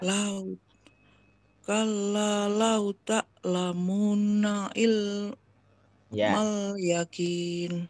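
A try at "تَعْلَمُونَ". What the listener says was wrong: Nah, terus ainya kurang dalam. Lau ta'lamun. Kurang tak ada yang nyangkut masih. Tak itu depan. Tak agak dalam. Ta'lamun. Oke, beda kan? Terdengar beda.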